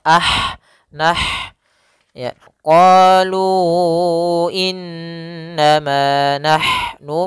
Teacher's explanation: thii innama nah ah di sini ada huruf ha sukun yaitu ha yang memiliki sifat hams maka alirkan dulu nafasnya